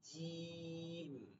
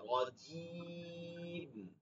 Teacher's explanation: জিমটা হচ্ছে জিব্বার মধ্যখান তালুতে লাগবে, দালের কোনো দাঁতের কোনো প্রয়োজন নেই।